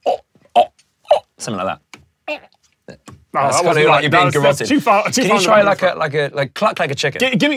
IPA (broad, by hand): ɔʔ